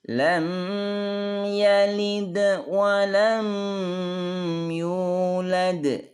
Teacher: Walam mim sukun sama tidak ada ba dan mim setelahnya, jelas pendek tidak dengung.